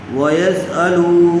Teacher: پیش والے حرف کے بعد وہ واو ساکن آیا ہوا ہے، اس لیے واو مدہ ہوگا، لام کو تھوڑا کھینچ کر پڑھیں گے۔